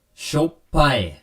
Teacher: and once again you have the double p consonant sound so double p gives sort of that hard stop there